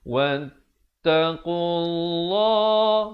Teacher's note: Lafz jalalah dibaca tebal dua harakat.